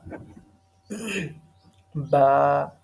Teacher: جب آپ اپنے دونوں ہونٹوں کو ملائیں گے نا، یعنی دونوں ہونٹ ملیں گے نہیں، بس آپس میں ٹچ ہوں گے اور ویٹ حصے کے ساتھ ٹچ ہوں گے۔